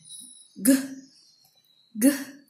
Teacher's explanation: Voice, place of articulation velar and manner of articulation plosive.